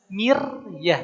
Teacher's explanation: Sebelumnya mim berharakat kasrah mi. Maka rnya dibaca tarkik, dibaca tipis.